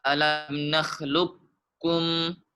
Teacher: Untuk pada bacaan alam nakhluqukum dibaca dengan idgham kamil. Jadi semua sifat huruf qaf dimasukkan ke huruf kaf tanpa tersisa.